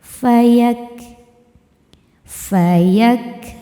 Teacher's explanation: Huruf kaf selain ada sifat syiddahnya, ada suara kuatnya, juga ada hamsnya, ada suara angin yang mengalir setelahnya. Nah, ketika kafnya ini sukun, maka yang keluar adalah bunyi ka dulu suaranya, fayak, suara tertahan.